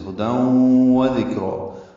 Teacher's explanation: ادغام مع الغنہ، تنوین کے بعد واو آنے کی وجہ سے